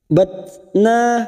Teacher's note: Huruf tak sukun mempunyai sifat hamas. Pada saat membunyikan huruf tak sukun ada desisan